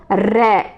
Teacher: तो इसमें रै है, जैसे हवा जो है लुढ़क कर आती है, जैसे रै 2-3 बार जीभ जो है लुढ़क रही है, रै जैसे कंपन कर रही है, लुढ़क रही है, तो उसे लुंठित व्यंजन कहते हैं।